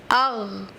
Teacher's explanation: موٹا بھی کرنا، حروف مستعلیہ میں سے ہے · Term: غین